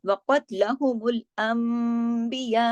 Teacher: अंबिया में नून साकिन के बाद बा आ रहा है तो यहाँ इक़लाब का कायदा लग रहा है, नून यहाँ मीम में बदल रहा है और यहाँ मद भी है, तो इसको इस तरीके से खींच के पढ़ना है।